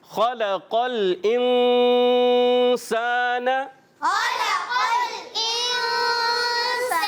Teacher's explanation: حرف مستعلیہ میں خا اور قاف دونوں کو ہم موٹا ادا کریں گے